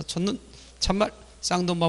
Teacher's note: 둘째 음절로 이어가면 자동 짧은 소리 됩니다.